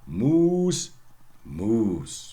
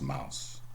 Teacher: since it is a long vowel, well, it goes into the great vowel shift and becomes mouse.